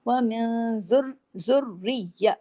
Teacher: نون ساکن کے بعد زال ہے، وہی اخفا حقیقی غنہ کاملہ